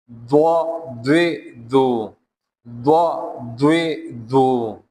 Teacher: زبان کی دائیں یا بائیں کھروٹ اوپر کی داڑھ کے دائیں یا بائیں طرف لگا کر پڑھیں گے